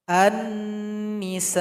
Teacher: Lamnya tidak dibaca karena telah bergabung dengan huruf yang berada sesudahnya. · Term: alif lam syamsiyah